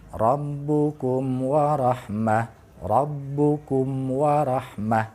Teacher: Nah, di sana ada mim mati menghadapi huruf wa. Maka bunyi mimnya itu harus terdengar jelas karena itu adalah izhar safawi.